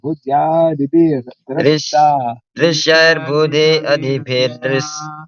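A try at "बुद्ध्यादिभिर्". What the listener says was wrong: It's not buddhi adibhir, it's buddhya. Buddhyadibhir.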